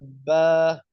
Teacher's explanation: ठीक है, बा असल में अदा होगा, ब, दोनों होंठों का शिकम अदा होगा, यानी वो उसका जो तरी वाला हिस्सा पेट है ना वो लगेगा आपस में। ठीक है, तो ये आपने बात याद रखनी है, इसलिए इसको क्या कहते हैं, बाहरी कहते हैं, इसको बाहरी कहते हैं, यानी तरी तरी वाले हिस्से को बाहरी कहते हैं।